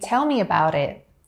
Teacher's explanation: again there's that tap t sound there and that connected speech